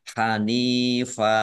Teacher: fathah tanwin Alif karena waqaf dibaca fathah dan panjang dua harakat namanya Mad iwad